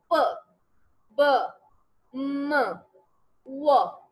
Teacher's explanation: तो जी जो वो साउंड है, दैट इज बेसिकली जब दोनों लिप्स आपस में बिल्कुल क्लोज हो जाते हैं, यानी कि दोनों लिप्स के इंटरेक्शन से जो साउंड प्रोड्यूस होती है उसको हम बायलेबियल साउंड कहते हैं